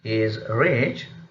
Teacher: The final type of the tone is fall and rise, where the speakers express some indirect or ironic meaning. And the example is, he is rich, which means he is not really benevolent or not really rich by heart.